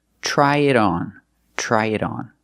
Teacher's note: the T in it is a fast D because it's between vowels.